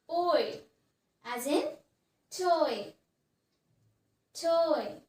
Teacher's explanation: we are moving from a more open position to a more closed position